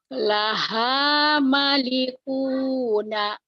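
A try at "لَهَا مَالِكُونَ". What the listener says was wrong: Maknya panjang. Laha malikuna.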